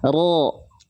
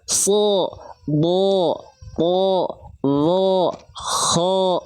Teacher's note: Selagi dia terdengar seperti vokal O, pangkal lidahnya naik, bukan monyong. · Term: pangkal lidah naik